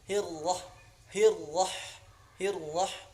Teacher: ra-nya rotban, ra tafkhim